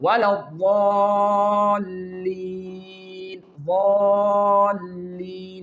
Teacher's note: Here, you can see the tongue is rising in our mouth and the sound is thick. That's why we put these letters in the heavy letter.